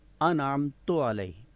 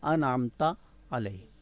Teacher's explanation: تو جو غلط پڑھا جاتا ہے وہ ہے انعمت علیہ، یعنی تا کی جو پیش ہے وہ زبر سے بدل دی جاتی ہے، اور اصل میں کیا ہے انعمت علیہ۔